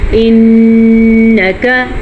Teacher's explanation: नून पे शद आ गई है तो गुना करना जरूरी है। इनका अच्छा बाज बच्चे क्या करते हैं कि शत के साथ-साथ लफज़ को भी लंबा कर लेते हैं।